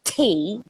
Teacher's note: Okay, so in British accent, it's more like tea. So they breathe out. The puff of air comes out.